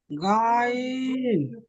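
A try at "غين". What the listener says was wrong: এখানে আপনি গাইন পড়লেন, তাই না? হ্যাঁ, গাইন পড়লে হবে না, এখানে পড়বেন গইন।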